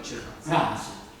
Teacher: la E va scritta ma non va pronunciata, questo è lo schwa che vi dicevo prima.